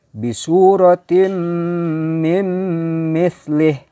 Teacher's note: Nah, ini juga tidak dibaca min, bukan bunyinya min, tapi memasukkan ke huruf idgham berikutnya yaitu mim lagi di sini. Tapi nun mati menghadapi mim ini tentu termasuk huruf idgham bigunah, ya, bigunah. Jadi dengan dengung juga.